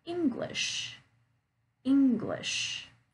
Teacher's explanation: I'm stressing on that first syllable in English